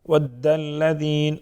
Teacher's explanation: دال مشدد مضبوطی کے ساتھ پڑھیں گے، ذال نرم پڑھیں گے، یا مدہ ایک الف کے برابر.